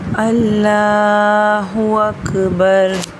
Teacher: جب بھی اللہ کے نام سے پہلے والے حرف کے اوپر زبر ہوگی وہاں پر اللہ کے نام کا لام موٹا پڑھا جاتا ہے۔